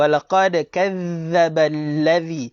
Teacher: Lepas tu jaga huruf dzal, keluarkan lidah, jaga sabdu.